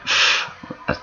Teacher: Lao Dental sound there when I went F an F sound the bottom lip touched my teeth and I pushed the air out